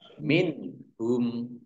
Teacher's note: Nun sukun bertemu dengan huruf ha, bacaan izhar, dibaca jelas. Min hum, nah, humnya dibaca pendek wakof karena tidak ada tanda panjangnya.